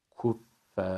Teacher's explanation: Sonuna kadar dödelik boyu bu incelik, Fer'deki incelik devam edecek. Uzatma bittiğinde Ra'ya bağlarken kalın bağlayacağız. Kuffer şeklinde.